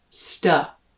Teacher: the first syllable is pronounced uh as in the way i say stuff sta and that second syllable even though it's an a spelling